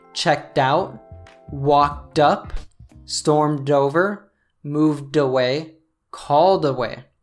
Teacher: Whether the last sound is a t or a d, it usually hooks on to the next vowel.